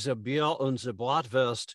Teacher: If you are speaking German, it tends to drop back a little bit more into the throat. It tends to be if you like the Bier und the Bratwurst, it's sliding down here more in the throat.